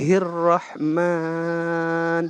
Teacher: Nah ini di dalam satu kata ini Ar-Rahman ini ada huruf ro bertasdid. Itu ro bertasdid kita bacanya agak ditekankan karena kita sambung dengan huruf sebelumnya. Nah di sini juga ada huruf mim yang tanda di atasnya harokatnya itu kan fathah itu namanya kalau garis atas, tapi fathahnya ini tegak lurus.